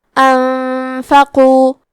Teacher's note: کلمت انفقوا میں نون ساکن ہے، پھر حرف الفا ہے، یہاں حکم ہے اخفاء، تو ہم یہ حکم کو غنہ کے ساتھ ادا کریں گے۔ انفقوا، یہاں حرف القاف ہے تو ہمیں قاف کو موٹی آواز میں پڑھنا ہے۔